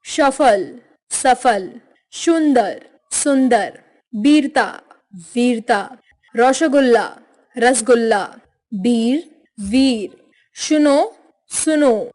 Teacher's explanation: बंगाल के लोग प्रायः स का उच्चारण श की तरह व का उच्चारण ब की तरह तथा शब्दों पर औ का प्रयोग करके उच्चारण करते हैं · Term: बंगाली उच्चारण